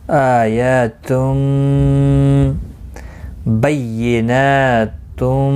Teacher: تنوین کے بعد یرملون کا میم آئے، ادغام باغنہ ہوگا. نا کے اوپر کھڑی زبر ہے، ایک الف کی مقدار کے برابر کھینچ کر پڑھیں گے.